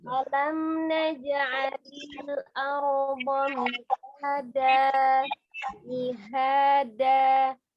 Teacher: mat pengganti yang dirubah fathah tanwin menjadi fathah itu 2 harakat ya. 2 harakat dibacanya. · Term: mat badal